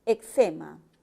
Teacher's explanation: La E es una vocal media anterior.